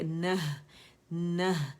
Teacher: نون پہ زبر ہے، اور ہا تا مربوطہ جو ہے جب ساکن کرتے ہیں وقف میں تو اس کو ہم نے کیا کیا کہ جب ہم وقف کرتے ہیں تو تا مربوطہ جو ہے ساکن ہو کے ہا ساکن میں بدل جاتی ہے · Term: تا مربوطہ وقف